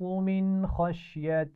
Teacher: من اس نون ساکن پر غنہ ہوگا نہیں، کیوں؟ کیونکہ حروف علقی میں سے خا آ گیا ہے